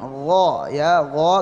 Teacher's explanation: Terutama ghain, gha ya, gha tebal jadi gha ya. Gha tebal tanpa membulatkan bibir juga ya.